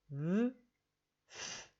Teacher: They're formed in the same way, in the same place, using your teeth and your bottom lip. V, f. The only difference is for v, I use my voice, so I feel some more vibration on my lip.